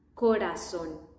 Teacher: There is no double R in this case, in this exception, just one R, and it's soft.